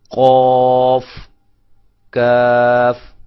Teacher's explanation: یہ زبان کی جڑ اور تالو سے ادا ہوتے ہیں. یہ ذرا بہت قریب جو ہے لحات ہوتا ہے، کوا جس کو ہم کہتے ہیں، یہ وہاں سے، اور یہ تھوڑا سا کوے سے اس لحات سے ہٹ کر منہ کے قریب تھوڑا سا آگے کی طرف جائیں تو وہاں سے کاف ادا ہوتا ہے.